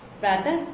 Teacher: जब हम उच्चारण करते हैं तो अंतिम में अह का प्रयोग होता है, अह आता है। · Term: विसर्ग